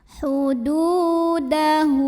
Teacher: dal yang berbaris dhammah kita panjangkan cukup 2 harokat saja. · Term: mad tabi'i